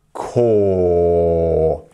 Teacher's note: My throat is even going a bit further down as I say caught. When I say cut, it's staying in the same place.